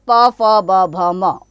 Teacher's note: प वर्ग, प, फ, ब, भ, म, ओष्ठ, होठ यानी कि इनका उच्चारण स्थान है।